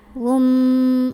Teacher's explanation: Ada iqlab karena ada tanwin dhammah bertemu huruf ba. Maka tanwin dhammahnya yang asalnya bunyi an diganti bunyi am. Tasrihum sambil ditahan.